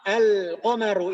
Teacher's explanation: Ketika disambung dengan al, maka lamnya itu terbaca dengan jelas, tidak ada idgham di sana. Tidak ada idgham, tidak masuk ke huruf setelah lam. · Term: huruf qamariyah